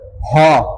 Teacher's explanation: বাতাস বেশি বের হচ্ছে, বিধায় হচ্ছে মহাপ্রাণ, আর এটা গলাটাও কাঁপে, বিধায় এটা হচ্ছে ঘোষ।